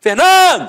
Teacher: a penúltima sílaba é a sílaba tônica